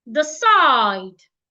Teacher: we should stress the second syllable, side. So the first syllable, we need to rush over it. The side, not decide.